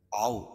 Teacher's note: واو ساکن سے پہلے زبر ہے تو واو لین، اس کو نرم آواز کے ساتھ جلدی پڑھیں گے